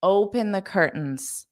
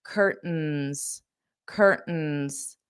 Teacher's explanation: I'm going to use that glottal stop and not pronounce the T. That isn't a requirement for you, but that's how Americans pronounce this.